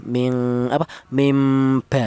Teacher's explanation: Diberi tanda huruf mim kecil itu menunjukkan bahwa cara bacanya huruf nun ini diganti dengan huruf mim apabila dia berjumpa dengan huruf ba. Nah, kata-kata diganti itu namanya iklab ya.